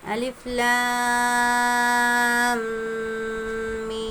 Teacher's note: میم پر تشدید ہے، میم مشدد غنہ کریں گے، اور ساتھ ہی میں مد ہے اس لیے اس کو کھینچ کے پڑھیں گے۔